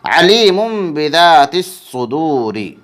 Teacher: یا مدہ کو ایک الف کے برابر کھینچ کر پڑھیں گے۔